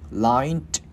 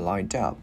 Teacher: Chữ D này nè, mình liên với chữ up and lined up.